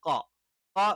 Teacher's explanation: നാവിന്റെ തുടക്കം അഥവാ നാവിന്റെ ആരംഭം അതിൻറെ നേരെ മുകളിലുള്ള അണ്ണാക്കിന്റെ മൃദുലമായ ഭാഗത്ത് ടച്ച് ചെയ്തുകൊണ്ടാണ്